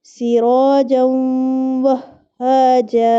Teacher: یہاں پہ ہم نے غنہ بھی کیا اور ادغام بھی کیا، کیونکہ تنوین کے بعد واو آ رہا تھا